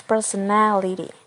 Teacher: The stress moves from per to ne.